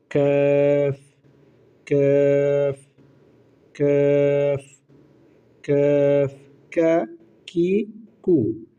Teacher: কাফ হরফ উচ্চারণের স্থান হচ্ছে জিহ্বার গোড়া থেকে একটু আগে বাড়াইয়া তারপর উপরে তালুর সঙ্গে লাগাইয়া, অর্থাৎ জিহ্বার গোড়া থেকে একটু আগে বাড়িয়ে তার বরাবর উপরের সাথে লাগিয়ে।